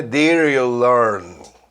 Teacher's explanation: E esse did you, ao emendar, fica meio R